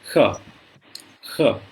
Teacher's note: ये जो शब्द है वो वास्तव में एकदम कंठ के तरफ से बोली जाने वाली श है। जैसे क ख ग घ अंग बोलते हैं, वो श भी वही उसी जगह पे उच्चारण होता है, ख ख।